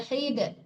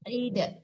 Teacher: Pantulkan dalnya karena dal itu huruf qalqalah.